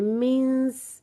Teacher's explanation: नून साकिन को इस तरह अदा करना है कि जैसे सीन बस अदा होने ही लगा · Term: इख्फा